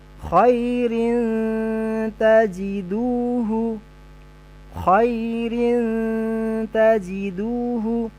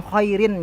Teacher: Nah, atau contoh yang lain, khairin tajiduhu, khairin tajiduhu, bukan khairin, ya, tapi kita samarkan bunyi bunyi tanwinnya masuk ke mahraj ta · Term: ikhfa